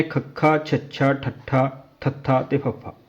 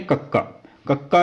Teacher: ਜਿਹੜੀ ਹਵਾ ਸਾਡੇ ਮੂੰਹ ਦੇ ਵਿੱਚੋਂ ਨਿਕਲਦੀ ਆ ਉਹ ਆਮ ਨਾਲੋਂ ਵਧੇਰੇ ਵਰਤਣੀ ਪਵੇ ਉਹਨਾਂ ਵਿਅੰਜਨਾਂ ਨੂੰ ਮਹਾਪ੍ਰਾਣ ਵਿਅੰਜਨ ਕਿਹਾ ਜਾਂਦਾ ਹੈ · ਜਿਨਾਂ ਧੁਨੀਆਂ ਦੇ ਉਚਾਰਨ ਸਮੇਂ ਹਵਾ ਦੀ ਮਾਤਰਾ ਆਮ ਨਾਲੋਂ ਵਧੇਰੇ ਵਰਤਣੀ ਪੈਂਦੀ ਹੈ ਉਹਨਾਂ ਨੂੰ ਮਹਾਂ ਪਰਾਣ ਤੁੁਨੀਆਂ ਕਿਹਾ ਜਾਂਦਾ ਹੈ। ਭਾਵ ਜਦੋਂ ਆਪਾਂ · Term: ਮਹਾਂਪ੍ਰਾਣ ਧੁਨੀਆਂ